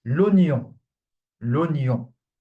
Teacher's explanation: onion is the only exception in French where the OI is not pronounced wa, but just O. Okay, the I is completely skipped.